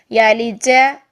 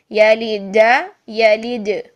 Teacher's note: آپ کی زبان کا درمیان فرنٹ تالو کی طرف آ رہا ہے رگڑ کھا کے